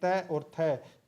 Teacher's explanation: त और थ ये अघोष व्यंजन में आते हैं